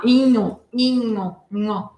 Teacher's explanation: Aqui outro som nasal. Também tem o som inho, né? É meio anasalado. · Mas na verdade é um nha, nha, nha. É isso que faz ser anasalado, né?